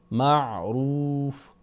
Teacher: عین کو پھر ہم نے حلق کی طرف لے جا کے آواز کو ادا کرنا ہے اور جھٹکے کی آواز سے بچنا ہے، معروف۔ پھر واو مدہ ہے تو ہم نے آواز کو کھینچ کر پڑھنا ہے، اور وقف کرنے کی صورت میں ہم یہاں پر اس کو مزید مد عارض وقفی یعنی مزید 2-3 الف تک اس کو مزید لمبا کر سکتے ہیں، بالمعروف اس طرح پڑھ سکتے ہیں۔